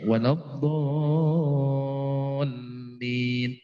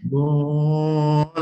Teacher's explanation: L-nya jangan lama-lama, tapi ada tasdidnya.